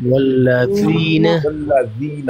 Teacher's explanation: ذال زبان کی نوک اوپر والے دانتوں کے کناروں سے لگے گی